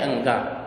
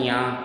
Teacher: इनका उच्चारण करने के लिए श्वास को अंशतः नासिका से बाहर निकालना पड़ता है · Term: अनुनासिक